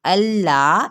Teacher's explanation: हमज़ा की ज़बर को लाम के साथ मिलाएंगे और लाम ज़बर अलिफ ला, इसको लंबा नहीं करेंगे